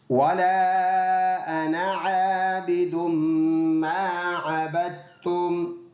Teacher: وَلَا میں چھوٹا مد ہے، 2 سے 3 الف کی مقدار لمبا کر کے پڑھنا ہوتا ہے۔ یہ والا الف نہیں پڑھیں گے، وَلَا أَنَا ہے، أَنَا۔